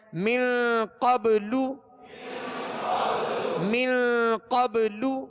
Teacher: قاف کو پر پڑھیں گے، حروف مستعلیہ میں سے ہے